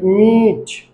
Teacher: দুই ঠোঁট একসাথে লাগিয়ে নাক দিয়ে নিঃশ্বাস বের করে বলতে হবে